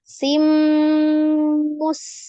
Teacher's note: Sinnya mengalir kembali ya. Ada sofir, desis, alhams, kemudian roghah ya. Mustamir. Nah, itu ro-nya juga disukunkan.